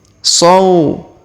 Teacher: Huruf so dipanjangkan atau diayun sekali karena terdapat waw sukun.